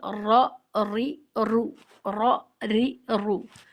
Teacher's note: किसी दूसरे हर्फ में नहीं पाई जाती सिफत तकरीर अदायगी रूफे रा को अदा करते वक्त जबान की नोक में हल्की सी कप कपाट पैदा होती है · حروف را کو ادا کرتے وقت زبان کی نوک میں ہلکی سی کپکپاہٹ پیدا ہوتی ہے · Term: صفت تقریر